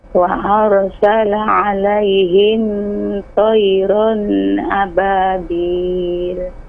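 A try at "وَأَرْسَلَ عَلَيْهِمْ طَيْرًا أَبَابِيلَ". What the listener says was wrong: Nah, tidak panjang ya. Tayran, salah. Tayran ababil langsung. Wa arsala. Iya, tapi tidak dibaca panjang. Itu alif yang membuktikan fathatainnya. Kalau untuk memberikan harokat fathatain maka ditambah alif, tapi bukan alif memanjang di situ. Kecuali kalau berhenti di situ, panjang 2 harokat. Misalnya, wa arsala alaihim tayra. Tapi kalau enggak, pendek.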